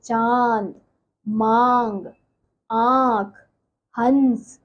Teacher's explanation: नाक से बोले जाने के कारण इन स्वरों को अनुनासिक कहा जाता है